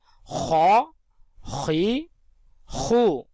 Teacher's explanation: خا کا مخرج ہے حلق کے اوپر والا حصہ